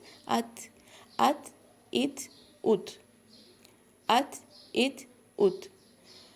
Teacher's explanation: تا پڑھتے ہوئے ہم تھوڑی سی سانس کی آواز لے کر آتے ہیں، اسے کہتے ہیں ہمس کرنا